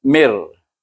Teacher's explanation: Maka kita masukkan mim ini bunyinya tanpa dengung kepada huruf ra. Mir. Mir ada getaran. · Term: idgham bila guna